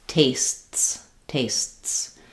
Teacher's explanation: So what's happening with that st and s together, st, is that basically there's a tiny little stop, and then this T is very short and goes right into the S